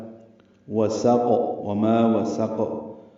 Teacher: سین کو قاف سے ملا دینا ہے، قاف ساکن ہے، اس پہ قلقلہ ہے. وسق وما وسق، قاف کو ہلا کر ادا کریں گے.